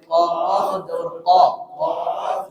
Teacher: জিহ্বার গোড়া থেকে মোটাভাবে আদায় হবে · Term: সিফাতে ইস্তিলা